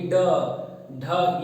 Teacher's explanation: ये सारी ध्वनियां मूर्धन्य से निकल रही हैं